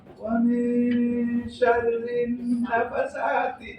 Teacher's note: Ikhfa samar. Samarnya antara nun dan shin. 50-50. Karena auson.